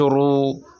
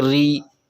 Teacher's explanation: جیسے را زبر را پیش رو، یہ پر ہوگی۔ را پر زبر یا پیش ہو تو پر ہوگی، اور زیر ہو تو باریک ہوگی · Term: رائے